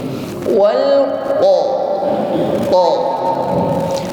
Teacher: mengucapkan qa dengan sifat syiddah, menekan, tidak boleh lembek, apalagi ada udara yang menyertainya.